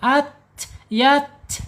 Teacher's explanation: Menyentuh pangkal gigi seri yang atas ta. Kemudian secara sifat ada di al-hamas, alirkan napasnya ketika dia sukun.